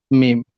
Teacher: দুই ঠোঁটের শুকনো অংশ মিলিত হয়ে উচ্চারিত হয় মিম। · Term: 15 নম্বর মাখরাজ